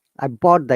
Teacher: If you say I bought the quickly, then one of the T is silent.